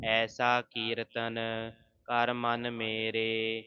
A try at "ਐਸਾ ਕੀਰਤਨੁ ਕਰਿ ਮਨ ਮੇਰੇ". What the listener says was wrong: ਐਸਾ ਕੀਰਤਨ ਬਿਹਾਰੀ ਦੇ ਨਾਲ ਉਚਾਰਨ ਕਰਨਾ ਕੀਰਤਨ ਨਹੀਂ ਕਹਿਣਾ